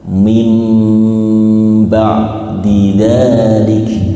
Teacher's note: Tulisannya min bacanya jadi mim. Nunnya wajib diganti dengan mim. Bacanya persis seperti ikhfa syafawi. · iqlab itu mengganti nun, bunyi nun diganti dengan mim